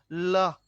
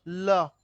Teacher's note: জিহ্বাটা সামনের দিকটা উপরের পাটির দাঁতের কাছে শাটারের মতো আটকায় রাখে, আর আটকায় রাখার কারণে বাতাসটা ঠোঁটের দুপাশ দিয়ে বেরিয়ে যায়, এই জন্য তার নাম হচ্ছে পার্শ্বিক ধ্বনি।